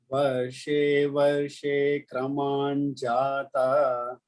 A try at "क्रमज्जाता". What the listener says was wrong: Not kraman, it is double ja. Kramajjata, double ja.